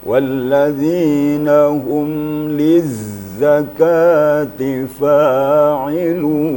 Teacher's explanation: Liz ada getarnya lebih kuat sedikit ya daripada waktu dia tidak pakai tasydid. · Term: safir